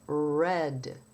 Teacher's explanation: In English, the tongue is curved up and the tip of the tongue is not touching anything in the mouth and you have a sound like red. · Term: English R